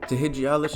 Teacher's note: Heed ends with a D, so it's going to be transformed into a J. Again, you add a T and then the normal alish ending.